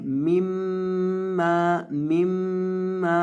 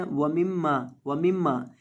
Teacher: ये मीम है, इसके ऊपर तशदीद है, मीम के ऊपर जब भी तशदीद आ जाए तो उसको गुन्ना करके पढ़ते हैं